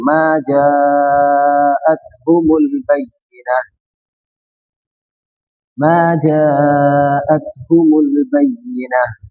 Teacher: یہ الف مدہ یہ جو ہے اس کو چار الف کے برابر کھینچیں گے